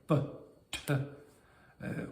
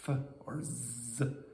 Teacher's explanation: a fricative kind of sound like F or Z where the air squeezes through